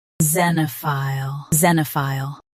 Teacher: Both US and UK have the same pronunciation of this word. Stress ze and keep ne soft. Finish with file clearly.